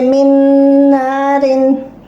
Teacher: You will merge this nun in this nun. Nun sakin, you will merge nun sakin in nun shadda. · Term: gunna and idgham